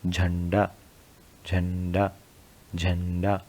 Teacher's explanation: देखिए आवाज़ कहाँ से आ रही है, नाक से ज़्यादा आ रही है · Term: अनुस्वार